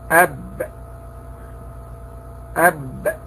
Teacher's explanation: ما بين الشفتين معا بانطباقهما انطباقا قويا من جهة داخل الفم. أهم الصفات أو الصفات عموما التي يتصف بها حرف الباء: أولا صفة الشدة.